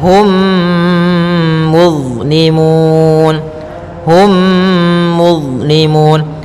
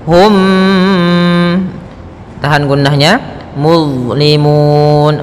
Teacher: Kemudian hum muzlimun, hum muzlimun, ada mim mati bertemu mim, maka kita namakan hukum tajwidnya idgham mimi. Cara membacanya, masukkan mimnya kepada mim setelahnya dan ditahan. Hum, tahan gunnahnya.